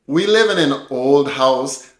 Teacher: Once again, at the beginning of this sentence, we're using linking. We live in an old house almost sounds like one long word. Cattonation is also being used at the end of the sentence. · we're connecting the consonant from an to the beginning vowel o to make an old sound almost like one word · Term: catenation